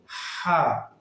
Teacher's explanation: হ্যাঁ, আগে বাতাস পরে আওয়াজ। এটা হলো হলকের মধ্যকান হতে অর্থাৎ মাঝখান থেকে উচ্চারিত হবে